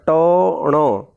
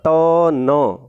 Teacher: मूर्धा नासिका से बोला जाता है ट ण। और दंत नासिका से बोला जाता है त न। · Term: उच्चारण स्थान